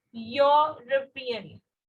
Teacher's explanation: यूरोपियन man जब हम बोल रहे हैं तो बेटा ई हमारा वाउल है, लेकिन जो साउंड आ रही है वो य की साउंड है